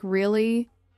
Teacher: when you ask a question like really, your voice goes up slightly at the end. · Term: rising